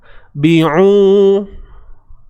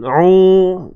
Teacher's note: Bi'u, huruf baris bawah bi, u sempitkan di tengah kerongkong kita untuk ain